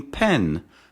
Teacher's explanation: both lips come together to produce a bilabial sound